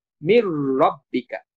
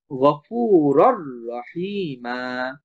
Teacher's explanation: নুনটা লেখার সময় আসবে কিন্তু পড়ার সময় আর আসবে না তখন মিমটা সরাসরি রকে ধরবে মির রব্বিকা নুনটা যেহেতু র এর সাথে যুক্ত হয়ে গেছে তখন র আমরা দুইবার উচ্চারণ করব। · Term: ইদগাম